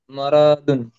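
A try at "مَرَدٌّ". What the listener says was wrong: মারাদুন, টান দেবেন না, মারাদুন।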